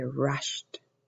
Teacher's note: we add an Ed but that Ed takes on the sound of a t